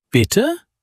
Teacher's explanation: Bitte, as pardon, rising intonation.